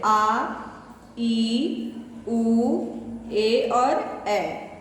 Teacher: इन स्वरों के उच्चारण में ह्रस्व स्वरों से दुगना समय लगता है. जितना समय इनको बोलने में लगता है उसका डबल टाइम हमें इन्हें पढ़ने में लगता है. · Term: दीर्घ स्वर